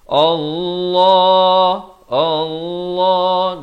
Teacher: Allah dibacakan tebal 2 harakat.